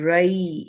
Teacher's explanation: یا سکون سے پہلے اگر فتحہ ہوتی ہے تو ہم اس کو یائے لین کنسیڈر کرتے ہیں، اور اس کی وجہ سے ہم اس کو جیسے لین سافٹلی ادا کرتے ہیں